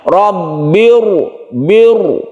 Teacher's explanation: Karena ada hamzah wasol di sini. Karena ada hamzah wasol, maka ro ini yang asalnya tipis menjadi tebal. Jadi ini membacanya ditebalkan disebabkan adanya alif ini. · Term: tafkhim atau tebal